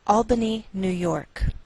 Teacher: we treat New York as one word and we place more stress on the second part, York.